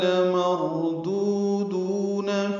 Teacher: لمردودون میں لام کو جلدی پڑھیں گے، را پر پڑھیں گے، دو دونوں واو مدہ ہیں، دو حرکات لمبا کریں گے